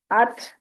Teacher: ता का है अत, इसको अत नहीं करना, अत करेंगे तो कलकला हो जाएगा, जबकि ये ता हरूफ कलकला में से नहीं है। तो इसको थ की आवाज के साथ पढ़ सकते हैं, अत, ताकि कलकला ना हो और ताकि आवाज भी हमें आए, साउंड सुनाई दे हमें कि ता हमने अदा की है।